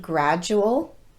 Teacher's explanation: american english speakers pronounce the letter d just like the letter j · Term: j sound